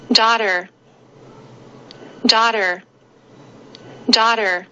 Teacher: 美式发音常常是读成卷舌音的